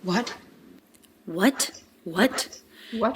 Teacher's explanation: She does a light true T release at the end.